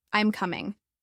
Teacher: For example, when asking a yes-no question, our pitch typically rises at the end, "Are you coming?" But when making a statement, our pitch falls